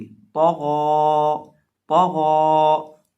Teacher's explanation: तौ को भी मोटा करेंगे और गैन को भी मोटा करेंगे। · तौ के ऊपर ज़बर है और गैन के ऊपर खड़ी ज़बर है और तौ को हम बिना खींचे पढ़ेंगे और गैन को खींच के पढ़ेंगे और इसी तरह दोनों को मोटा करके पढ़ेंगे।